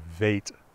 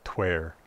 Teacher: a V at the beginning of a word is a V sound, but after a consonant, it's a wa, so that you would have vate, I know, but then something like tver, too.